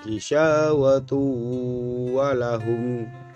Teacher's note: Tanwin berupa dhammatain bertemu dengan salah satu huruf idgham biguna berupa waw, maka cara membacanya bunyi n pada dhammatain harus dimasukkan ke dalam huruf waw dan disertai dengan berdengung. Jadi bunyi n pada dhammatain dianggap hilang karena sudah dimasukkan ke dalam huruf idgham biguna.